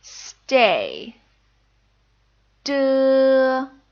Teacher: du is unaspirated and is similar to the T sound in stay see how I'm not blowing air through my mouth stay du